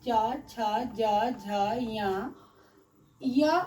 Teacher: च वर्ग च, छ, ज, झ, य और तलाब्य स का उच्चारण स्थान जो होता है सो तालु से होता है, इसे हम तालाब्य वर्ण कहते हैं।